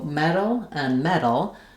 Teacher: So metal and metal, we make no difference between those. We use a flap, which means we're lifting our tongue up to the T and D spot. Our voice is on and we're not building up any pressure.